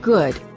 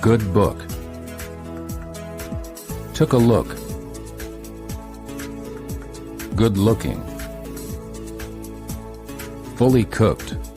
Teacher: The lips are very rounded and the tongue is relaxed. The back of the tongue is raised. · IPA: /ʊ/